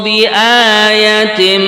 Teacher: Kalimat bi'a, ini yang panjang a-nya saja, ya-nya pendek